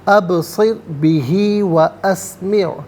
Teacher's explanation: ابصر بہ، ابصر بہ واسمع، ابصر بہ واسمع، ابصر میں با ساکن ہے لیکن حرف قلقلہ ہے تو آواز لوٹتی ہوئی محسوس ہونی چاہیے، ابصر نہیں بلکہ ابصر، را ساکن ما قبل صاد کے نیچے زیر، را ساکن کو باریک کر کے پڑھا جائے گا۔